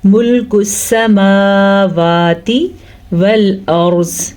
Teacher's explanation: ملک السماواتی، سین کے اوپر صرف اور صرف زبر ہے، اس کو ہم لمبا نہیں کریں گے زبر کی وجہ سے۔ میم اور واو کے اوپر کھڑی زبر ہے تو اس کو ہم کھینچ کے پڑھیں گے